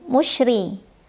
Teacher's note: musyrik roknya dibunyikan secara taktik karena rok berbaris dan barisnya kasrah cara membacanya adalah ditipiskan pangkal lidah kita tidak perlu naik